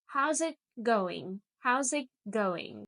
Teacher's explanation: The it almost disappears.